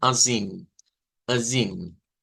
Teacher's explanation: Es nada más, debemos decir azim, azim, con la Recuerden que eso es la I y la virgulilla es una I nasalizada